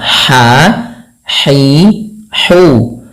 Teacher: Bagaimana cara pelafalan ha-nya? Yaitu dari tengah tenggorokan kita. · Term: ha kecil